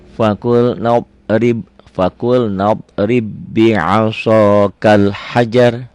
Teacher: ba-nya masuk ke ba, diidghamkan